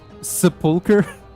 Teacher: instead of being a ch sound, it's a k sound, which is quite peculiar